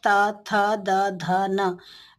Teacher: इन्हें जिह्वा और दंत से स्पर्श करके ही हम कह सकते हैं त थ द ध न, इनका उच्चारण हम कर सकते हैं।